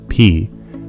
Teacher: If it involves both of your lips, like the sound P, that's going to be a bilabial sound. Bilabial meaning both lips.